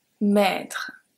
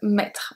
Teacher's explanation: Le maître is a longer E, maître. And then we have maître, which is a short E.